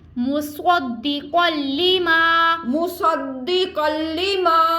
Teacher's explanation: مصدق, قاف حروف مستعلیہ اس کو پر پڑھیں گے, اور تنوین کے بعد لام آ گیا حروف یرملون میں سے, لام میں ہم غنہ نہیں کریں گے. آگے ما الف مد ہم اس کو کھینچ کے ادا کریں گے